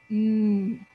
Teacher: I cannot make the M sound if I plug my nose I put my hand on my throat M and I feel a vibration so m is a voice sound